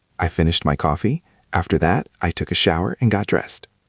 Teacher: We usually go up a little bit in pitch on that phrase, after that.